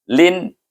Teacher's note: Lin tak ada dengung, tak ada panjang. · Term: izhar harki